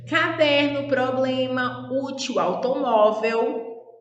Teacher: Paroxítonas, as sílabas tônicas é a penúltima sílaba